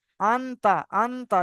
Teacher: এটা পরিষ্কার হলো, কোনো গুন্না হলো না, টান হলো না, কিচ্ছু হলো না। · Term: ইজহার